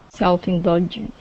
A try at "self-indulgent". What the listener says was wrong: Okay, get the T there at the end. Self-indulgent.